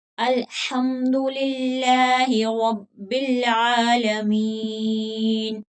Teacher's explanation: लाम जो है अल्लाह का लाम है, इसको बारीक पढ़ेंगे क्योंकि इससे पिछले हर्फ के नीचे जेर है। अगर जबर या पेश हो तो उसको मोटा करके पढ़ेंगे, लेकिन यहाँ पर जेर है तो इसको बारीक पढ़ेंगे।